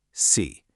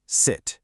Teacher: 2 pure vowels, but totally different in length and how tense your mouth is.